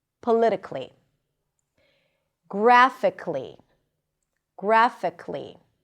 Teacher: It's probably not a mistake to pronounce the schwa, but usually people don't pronounce it. They just connect the k and the L.